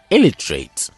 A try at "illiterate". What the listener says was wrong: Well, if you pronounce it that way, you are placing the stress on the first syllable. The stress is actually on the second syllable. Plus, the last two vowel sounds are schwa sounds. So it's pronounced illiterate.